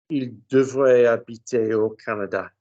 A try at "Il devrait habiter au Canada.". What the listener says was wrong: Good. Canada, vowel in the right place.